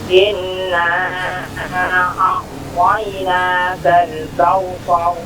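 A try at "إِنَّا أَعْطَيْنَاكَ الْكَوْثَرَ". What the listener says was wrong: Baik, untuk in tahan sedikit lagi ya.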